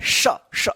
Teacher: इसका जो है ना घर्षण या रगड़न की मदद से इसका उच्चारण होता है श श श, जो अंदर से हवा आता है ना, उष्म गर्म हवा जो है ना वो घर्षण करते हुए निकलता है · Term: ऊष्म व्यंजन